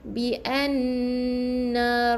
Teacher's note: makhraj huruf nun yang bersabdu sebenarnya dia di bahagian rongga hidung. Jadi kena dengung 2 harakat.